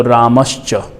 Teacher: तो च वर्ण आने से हम इसको दंती सकार नहीं करके तालव्य सकार करेंगे। राम के बाद में विसर्ग को हम करेंगे स आधा, तो रामश्च।